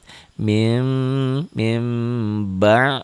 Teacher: Berubah bunyi nun matinya berubah menjadi bunyi mim mati. Min jadi mim. Tapi agak samar sedikit. Ya, bibirnya tapi jangan rapat. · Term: iklab